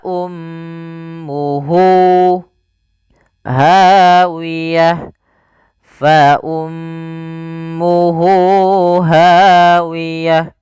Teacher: mad yang kita panjangkan dua harakat disebabkan karena ada ha domir yaitu huruf ha di sini seperti ini ada huruf wau kecilnya maka panjangnya dua harakat. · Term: mad silah qasir